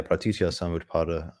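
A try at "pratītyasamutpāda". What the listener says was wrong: Oh, you're just not saying it fast enough.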